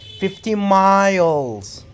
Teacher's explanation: you have to put the stress on miles